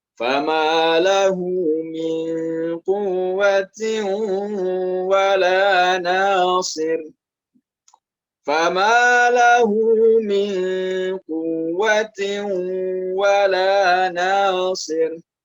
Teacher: di lahunya sendiri di situ 2 harokat ya, karena di sana ada dhammah terbalik